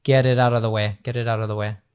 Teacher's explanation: when we have a T between different vowel sounds, it turns into this da da da. Similar to like some R's that you have in Portuguese or in Spanish. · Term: American T